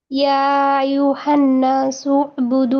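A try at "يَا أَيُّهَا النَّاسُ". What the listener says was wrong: আইয়ুহান, এখানে গুণা হবে না আপু? গুণা করে পড়ি।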